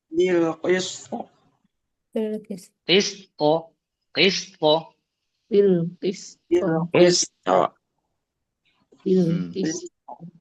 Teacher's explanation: Ingat, tanpa hamzah sukun di qalqalahnya.